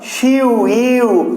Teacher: এদেরকে এক নিঃশ্বাসে একসাথে উচ্চারণ করতে হবে। তো দুটো স্বরকে যদি একই সাথে উচ্চারণ করতে হয় এক নিঃশ্বাসে, তাহলে এই দুটি স্বরকে একসাথে বলা হয় যৌগিক স্বরধ্বনি বা দ্বি-স্বরধ্বনি বা যুগ্ম স্বরধ্বনি।